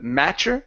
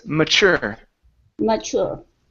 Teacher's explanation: stress on the end of the word instead of mature, it's mature.